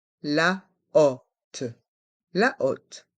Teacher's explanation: Dans le mot la hotte, le H est muet. On prononce le O, O. C'est un O ouvert.